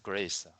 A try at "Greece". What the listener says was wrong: Yeah. Greece. Yeah, it has a long E sound. Greece. Very good.